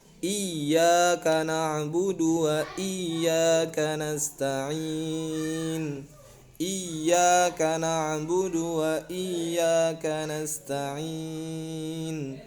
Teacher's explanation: Iyanya itu ditahan sebentar. Kenapa ditahan sebentar? Karena ada tasydid di sana.